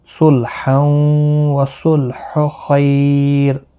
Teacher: ملانے کی صورت میں ادغام مع الغنہ ہوگا۔ · صاد مستعلیہ ہے، پر پڑا جائے گا، خا مستعلیہ ہے، پر پڑا جائے گا۔ خیالین ہے، تھوڑا نرمی کے ساتھ پڑھیں گے، اور وقف کی صورت میں را یہاں باریک پڑا جائے گا۔